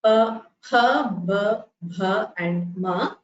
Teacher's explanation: For all of these, the lips come in contact with each other. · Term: labials